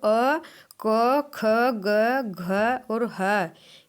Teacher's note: अ, क, ख, ग, घ और ह, इनका जो उच्चारण स्थान है वो कंठ से होता है